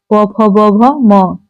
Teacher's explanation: ओष्ठ से बोलते हैं प वर्ग